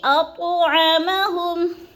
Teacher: اط کی تو پہ قلقلہ کریں گے